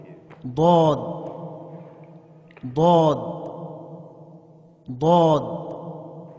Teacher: کنارہ زبان داڑھ سے مل کر غاد ادا ہوتا ہے